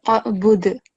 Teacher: So you have to create a jerking sound, and it's called qalqala in Arabic.